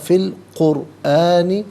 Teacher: را ساکن ما قبل کاف پر پیش ہے تو را ساکن کو پر کر کے پڑھیں گے، اور یہاں رکیں گے تو قرآن پڑھیں گے۔